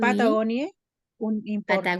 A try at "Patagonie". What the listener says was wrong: Patagonie, sin la E final, en Patagonie.